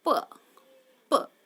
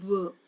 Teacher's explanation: Suppose p, that is the voiceless, and b, that is the voiced sound.